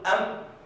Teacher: هو يقول ميما أي بإطباق الشفتين إطباقا خفيفا، مثل ما يقول أم، ولكن لابد أن يكون معها غنة، وهذه الميم مخفاة أي لا تظهر عندي، لا تظهر. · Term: القلب